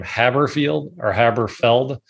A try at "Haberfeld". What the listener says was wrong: Yeah, there's no I. You got it.